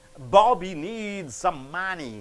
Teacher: so Bobby and money should be stressed